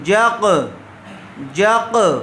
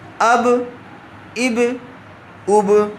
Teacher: جیم قاف زبر جق، جیم کی آواز کاف سے ٹکرائی اور الگ ہو گئی، اس کو ملا کر جق ایسے نہیں ملا کر نہیں رکھنا ہے، بلکہ قلقلہ اس کو کہتے ہیں آواز ٹچ ہوئی اور الگ ہو گئی